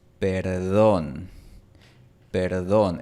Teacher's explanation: en el acento de Colombia, también se pronuncia como una D, como un cierre completo, después de la consonante R.